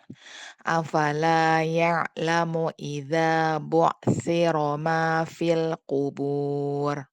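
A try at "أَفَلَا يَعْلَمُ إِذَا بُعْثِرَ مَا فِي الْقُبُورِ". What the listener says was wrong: Nah, kurang tebal. Qubur.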